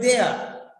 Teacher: Individual word there. No R sound at all. There. You cannot pronounce R in the end. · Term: R is silent